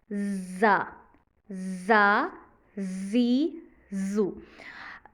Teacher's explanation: ये letter सीन की तरह पढ़ा जाता है, जिसमें सीटी की आवाज़ आती है